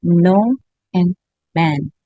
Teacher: Oral passage is blocked by pressing tongue tip against the alveolar ridge. · the air is actually stopped with the tip of tongue at the alveolar ridge, but still the air comes out the nose